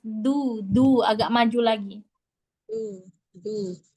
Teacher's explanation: ujung lidahnya taruh di tempat gigi seri atas. Tempat tumbuh gigi seri atas. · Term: Huruf dalnya